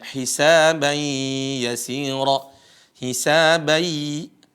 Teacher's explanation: Ada tanwin bertemu dengan ya sama ini juga suara nunnya ya suara n-nya hilang atau bahasanya adalah Idgham dan kita sudah berulang kali membahas tentang · seolah-olah n-nya hilang tapi karena ini adalah Nun suara Nun di sini enggak hilang total